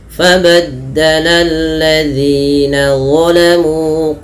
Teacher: Kemudian pada lafaz zina di sini ada mad thabi'i panjangnya dua harakat · Nah, hati-hati di dalam melafalkan mad tabi'i, jangan sampai terlalu panjang sekali.